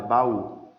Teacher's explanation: Na palavra baú, a sílaba mais forte é a última.